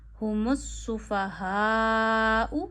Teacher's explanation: हा पूरा अदा करना है गले के आखिर से, इसे खाना नहीं है, सुफ़हा नहीं पढ़ना, सुफ़हा नहीं पढ़ना, इसे भारी अदा करिए।